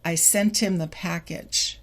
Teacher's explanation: the T from sent moves to the I, and we get sent him.